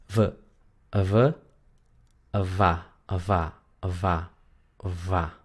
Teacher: la V chica en holandés se pronuncia como tocando los labios. Es muy parecida a la F, pero no es F